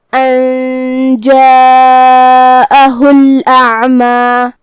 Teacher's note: حمزہ کی ادائیگی حلق کے نیچے والے حصے سے ہے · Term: حمزہ قطع